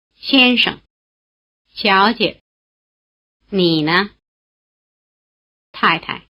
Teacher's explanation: In some of the previous lessons, we've already come across syllables in what we call the neutral tone, that is, unstressed syllables which cannot be assigned to any of the four tones